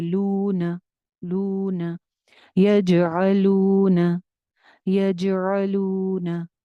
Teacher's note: लू वाव मद्दा एक अलिफ लंबा, न सिंगल हरकत।